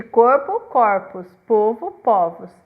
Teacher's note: vogal média posterior tônica, o O fechado, muda no plural o O fechado pelo aberto, de corpo, corpus, povo, povos.